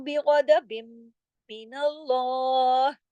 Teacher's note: अब वबाऊ बिगदबिम मिनल्लाह, अब ये बाऊ को क्यों खींचा, मद की वजह से। गैन और द्वाद दोनों मोटी हुरूफ है। गदबिम, यहाँ देखिए मीम मुशद्दद है, बड़ा गुन्ना हुआ।